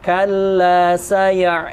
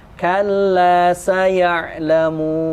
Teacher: karena dia ada sifat khayshum, ya, masuk ke rongga hidung. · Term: sifat dengung